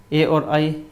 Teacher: ए और आई, इनका उच्चारण कंठ और तालु से होता है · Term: कंठ तालु